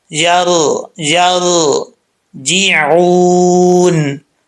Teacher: रा साकिन से पहले ज़बर है तो रा को पुर पढ़ेंगे